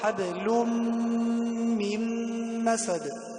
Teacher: يعني النون هنا لا نقرأها، ندغمها مع الميم. حبل من مسد، لا نقل حبل من مسد، حبل من مسد. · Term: إدغام بغنة